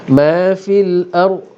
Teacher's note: Ra tebal kerana ra ini mati sebelumnya berbaris atas, memang akan kita tebalkan.